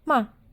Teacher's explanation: існує нульовий так званий п'ятий тон він не позначає взагалі ніяк і звук при вимові короткий